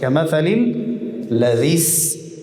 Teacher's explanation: همزه وصل در وصل خود نطق نمیشه